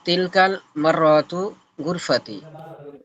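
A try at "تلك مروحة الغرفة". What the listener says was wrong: তিলকা মির রাহাতুল গুরফাতি। তিলকাল না, তিলকা মির রাহাতুল গুরফাতি।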